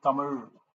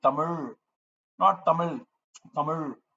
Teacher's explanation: So you have to really roll and bend your tongue inwards, and the tip touches the back of the tongue, touches the palate, right, in the rolled form.